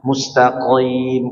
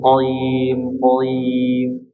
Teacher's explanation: Qim juga tidak ditebalkan